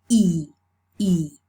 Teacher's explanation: And then the tenseness of the tongue, E, E, will give us the quantity. So the FLEECE is a long vowel, and the tongue is tense in order to make it long. For the vowel to be long, we need to make the tongue tense.